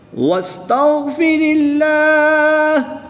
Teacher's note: اس میں جلالت اللہ عز و جل کے لام سے پہلے حرف کے نیچے زیر ہے تو اس لام کو بھی ہم باریک پڑھیں گے، پر نہیں پڑھیں گے۔